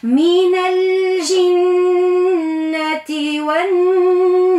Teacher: عرضتني نون مشددة في كلمة الجنة، نشير إليها طبعا نعطيها غنة فرعية · راهي الجيم حرف قمري، اللام يلزمها تظهر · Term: لام التعريف